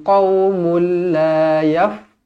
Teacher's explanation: Tanwin 99 bertemu dengan lam, idgham bila gunnah. Tak dengung. Jangan baca qaumul la.